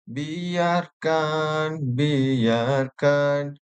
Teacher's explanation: Frasa biarkan biarkan diulang dengan intonasi menurun. Biarkan biarkan menurun membawa nada pasrah dan sinis.